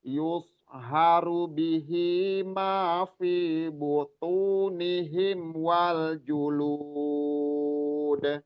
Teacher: Jadi direndahin, turunin nadanya dan dipanjangin jadi mat arid li sukun.